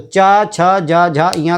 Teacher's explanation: चा छ जा झा इया का उच्चारण स्थान है तालु